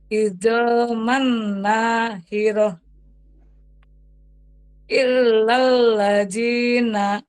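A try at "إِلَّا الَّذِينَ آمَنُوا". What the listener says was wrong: Panjang a-nya, Bu. Panjang Au.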